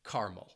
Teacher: making it a 2-syllable word and dropping that second syllable and omitting that schwa sound, and people would just say caramel.